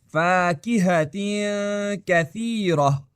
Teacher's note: آپ کا منہ کا کہنے کے لیے تیار ہوتا ہے مگر آپ اسے ادا نہیں کرتے بلکہ غنہ کرتے ہیں